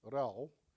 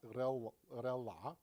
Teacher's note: a minus back vowel is immediately followed by a velarized L